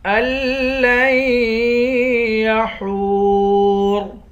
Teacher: ہا کو واو کے ساتھ ملا کر واو کو ایک الف کی مقدار کھینچیں گے، آخر میں را ہے، را کو موٹا پڑھیں گے۔